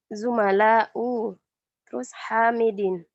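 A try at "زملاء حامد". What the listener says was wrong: Langsung nggak usah ada jeda. Coba ulang.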